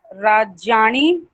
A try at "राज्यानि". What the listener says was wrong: हाँ, ण नहीं होगा, न ही होगा, राज्यानी।